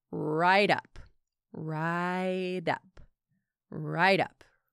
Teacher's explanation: Notice how right up sounds like one word with a flap T in the middle.